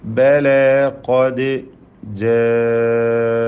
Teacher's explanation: തടിപ്പിച്ച് ഉച്ചരിക്കേണ്ട അക്ഷരമാണ് ഖാഫ്. ഖദ്, ദാലിൻ്റെ സുക്കൂൻ ഖൽഖല നൽകി ശബ്ദം ചലിപ്പിക്കണം